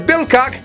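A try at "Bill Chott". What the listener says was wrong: Actually, it's not Bill Cock. It's pronounced cot. The CH at the beginning of the word, C-H-O-T-T, it makes a K sound like Christ or chronic, whatever you're addicted to.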